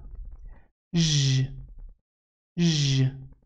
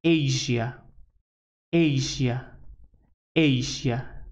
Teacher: The sound zh, zh, zh is a voiced, it should vibrate. Well, it is a voiced post-alveolar fricative consonant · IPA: /ʒ/